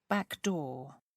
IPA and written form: ˌbækˈdɔː (backdoor)